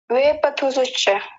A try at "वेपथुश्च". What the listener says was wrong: शश्च कहाँ है? केवल इतना है, वेपथुश्च, वेपथुश्च।